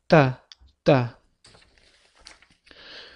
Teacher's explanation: tilimiz tepa tishimizni ortki tarafiga biroz tegib turadi. Ya'ni tish ortidan talaffuz qilinadi. O'zbek tilidagi t harfi kabi.